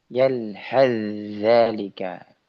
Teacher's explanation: Yalhas zalika, tapi dibaca yalhaz zalika. Ya, sa-nya dihilangkan.